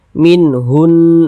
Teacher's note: huruf lamnya ini kan dia tidak ada tanda bacanya nih jadi cara membacanya tuh dari Hu langsung masuk ke huruf nun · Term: alif lam syamsiah